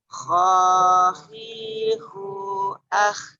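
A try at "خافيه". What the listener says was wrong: Tebalkan huruf kho. Huruf isti'ala. Isti'ala. Istilah itu secara bahasa naik. Maksudnya naiknya suara ke langit-langit mulut ketika mengucapkan hurufnya sehingga baca tebal.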